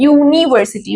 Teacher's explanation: दो it's a vowel letter but इसकी sound consonant है, यूनिवर्सिटी, वाई का आवाज आ रहा है। What is a Y, Y is a consonant sound, तो मैंने वहां पे ए का इस्तेमाल किया, ए का इस्तेमाल आएगा, ठीक है।